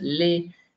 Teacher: la position justement des lèvres qui sont étirées quand on prononce les